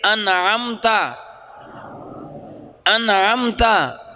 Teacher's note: عین ہے حروف حلقی میں سے، اس لیے اب نون کو یوں لمبا نہیں کریں گے، یوں لمبا نہیں کریں گے، اس کو ایک حرکت کے برابر ہی لمبا کریں گے۔ اس عمل کو اظہار کہتے ہیں۔ مثلا پڑھیں گے انعمتا، انعمتا، اس کو انعمتا پڑھنا غلط ہوگا، اس کو ہم انعمتا نہیں پڑھیں گے۔